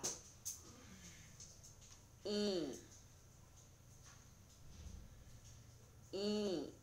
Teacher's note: 모음 이는 혀 끝을 아랫니 바로 뒤에 잇몸에 대고 입은 입천장에 다을락말락하게 높게 하고 입술은 양옆으로 당기면서 평평하게 만들면서 소리를 냅니다.